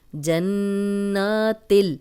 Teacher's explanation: نون پہ شد ہے تو غنہ کریں گے